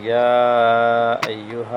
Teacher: یہاں پہ مد جائز ہے، اس کو 2 سے 4 حرکت لمبا کریں۔